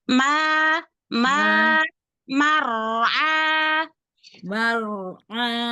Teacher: Tebalkan ro dan dapetin ain